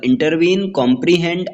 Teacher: Anapaest दो unstressed syllable और एक स्ट्रेस्ड सिलेबल।